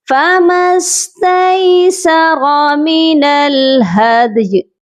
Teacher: دال پر قلقلہ اور یا ساکن